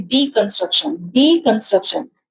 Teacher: तो डीकंस्ट्रक्शन कहने में डी पे हमारा स्ट्रेस ज्यादा आया है. डीकंस्ट्रक्शन, ट्रक पे फिर आया है, उसके बाद कन पे नहीं आया है, तो यहाँ पर हमें सेलेबल को काउंट करना होता है.